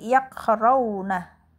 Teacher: Imam Hamzah muwaqaf dengan menghadzaf huruf hamzah jika berdiri sendiri.